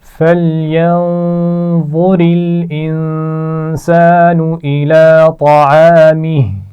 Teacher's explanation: انسان نون پر غنہ ہے، اس کے بعد الف مدہ ہے